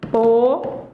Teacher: E aí você vai perceber que a sílaba tônica é a antepenúltima. Ela não é mais paroxítona. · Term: proparoxítona